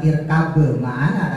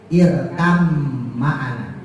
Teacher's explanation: ketika ba ketemu mim, maka tidak dibaca irkab ma'ana, tapi diidghamkan menjadi irkam ma'ana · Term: idgham mutaqaribin